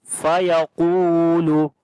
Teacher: Qaf we read in heavy sound due to isti'la letter. Waw is madda there.